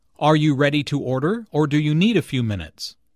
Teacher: Notice the rising intonation on order and the falling intonation on minutes